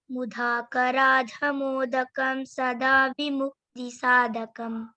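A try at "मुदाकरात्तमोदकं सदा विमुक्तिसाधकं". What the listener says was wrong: No, not mudha. So we should not stress on letters where there is no stress required. Mudha, not mudha. Mudhakarathamodakam sada vimukti sadakam. Mudhakarathamodakam sada vimukti sadakam.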